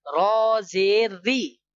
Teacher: Remember, if we have fatha on ra or damma, okay, fatha or damma if we have on the ra, then we must read this ra full mouth, okay, we must read in bold sound, okay. If we have kasra at the below of the ra, then we read this ra in a light sound.